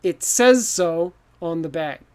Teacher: it's S, a Z sound, and then an S. Says so.